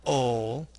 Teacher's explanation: slightly lowering the jaw with unrounded lips to produce a schwa sound, and then making the tip and a portion of the tongue come into contact with the center of the alveolar ridge to produce the L sound. This sound is made with vibration of the vocal folds. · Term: syllabic L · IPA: /l/